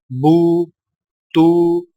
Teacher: سامعین کرام، آپ پڑھ چکے ہیں کہ سیدھی پیش اور الٹی پیش دونوں حرف کے اوپر ہوتی ہیں، لیکن دونوں میں فرق یہ ہے کہ سیدھی پیش کو ہونٹوں کو گول کر کے بغیر کھینچے اور جھٹکا دیے پڑھا جاتا ہے، جیسے بو، تو، سو، اور الٹی پیش کو ہونٹوں کو گول کر کے تھوڑا سا کھینچ کر پڑھا جاتا ہے